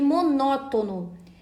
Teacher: monótono é uma proparoxítona ou seja possui a antepenúltima sílaba tônica e toda proparoxítona é acentuada sabemos disso a gente deve buscar